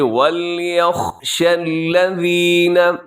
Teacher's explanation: سب سے پہلے وَلْيَخْشَ الَّذِينَ، خا کا خیال رکھیے گا، اور شین کے اندر صفت تفشی ہے، آواز اس میں پھیلتی ہے